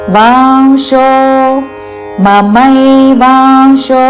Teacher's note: అనుస్వారము నాసిక వ ఉచ్చారణ